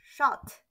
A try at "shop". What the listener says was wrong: With the letter P. Shop.